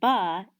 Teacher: the word ba is um it's bilabial consists of two of your lips moving together right but we know that it's a stop in that when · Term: bilabial stop